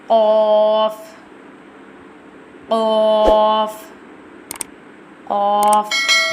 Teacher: Qaf pronounced from the root of the tongue touching the soft part of the palate, top of the mouth.